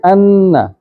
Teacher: نون پہ شادہ آ جائے تو آواز لمبی کی جا سکتی ہے ناک سے. ہاں، ان زیادہ بھی کر سکتے ہیں.